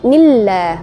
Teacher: Na itu berbaris kasrah bertemu dengan lafaz Allah. Lafaz Allah yang sebelumnya ada kasrah itu dinamakan tarqi, maka dibaca tipis.